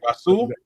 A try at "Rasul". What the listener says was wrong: The H is silent.